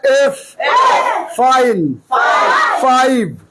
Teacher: এফ উচ্চারণ হলো উপরের দাঁত নিচের ঠোঁট উপরের ঠোঁট যেন নিচে শক্ত হবে না উপরের দাঁত নিচের ঠোঁট